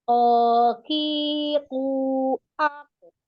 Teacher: Ketika kasroh itu tidak boleh lebih tebal dari fathahnya. Jadi ukuran ketebalannya huruf qaf itu berharokat fathah nomor 1 lebih tebal. Kemudian dhamma baru terakhir kasroh.